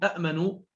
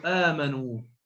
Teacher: أبدلوا الهمزة الساكنة حرف مد من جنس حركة الهمزة الأولى